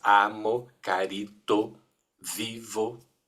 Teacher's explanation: o acento tônico cai na penúltima sílaba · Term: paroxítonas